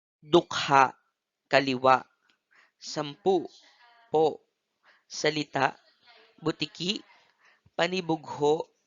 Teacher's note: Tulad ng mabilis, binibigkas ito ng tuloy-tuloy, subalit may impit sa huling pantig. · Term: maragsa